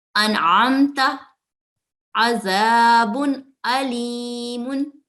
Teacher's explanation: नून साकिन और तनवीन की आवाज गुन्ने की तरह अदा नहीं करते बल्कि एक सेकंड के लिए साफ और वाज़े अदा करते हैं। मसलन अनआमता, अज़ाबुन अलीमुन।